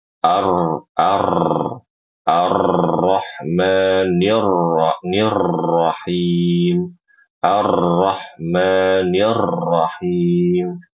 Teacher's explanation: huruf r-nya itu terlalu banyak getarnya ya. Terlalu banyak getarnya.